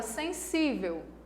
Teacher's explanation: 1, 2, 3 sílabas. A sílaba mais forte é a penúltima. Então, ela é uma palavra paroxítona.